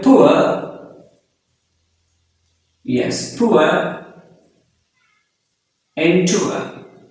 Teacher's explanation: The starting sound is u sound and the ending sound is schwa sound, which is a. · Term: ua diphthong